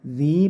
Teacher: Zi panjangkan satu alif karena ini mad tabi'i, atau gampangnya cukup diayunkan.